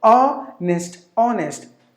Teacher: Two syllables in this word. The first syllable is given more volume.